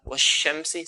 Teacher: It has a characteristics that when we pronounce this letter, okay, from its makhraj point, which is the middle part of the tongue, until it comes out, okay, the sound of the sheen has to spread from the middle part of the tongue until it comes out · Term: the spread